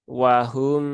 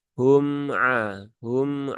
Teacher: izhar syafawi tidak mengalir tidak tertahan serta tidak memantul